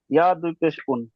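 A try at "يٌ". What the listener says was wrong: ইয়া দু পেশ উন হবে না জি, ইয়া দু পেশ ইউন।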